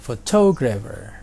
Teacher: kata ini terdiri dari 4 syllables dan stresnya ada di syllable yang kedua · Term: word stress